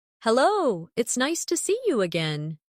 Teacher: see you often sounds like see ya in fast speech.